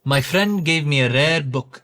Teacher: Step one, tap the R. In Indian English, the R is often tapped lightly with the tongue against the roof of the mouth, similar to how Spanish speakers roll their Rs.